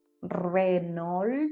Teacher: le R, il va toujours être roulé quand ça commence un mot. Donc, c'est pour ça qu'on dit Renault.